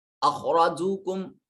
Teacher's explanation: خا اور را کو موٹا اور پر کر کے پڑھا جا رہا ہے